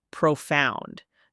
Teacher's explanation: Notice how the emphasis is on the second syllable.